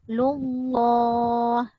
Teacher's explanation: Dibaca dengan tebal, lam dipanjangkan 2 harakat. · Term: lafaz al-jalal